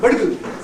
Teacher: He was stressing the first syllable of this adverb when he should have been stressing the second